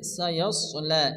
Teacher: এরপর এখানে সায়াসলা, এখানে সোয়াদ আসছে, সোয়াদকে মোটা করে অর্থাৎ মুখ গোল করে একটু মোটা করে উচ্চারণ করতে হবে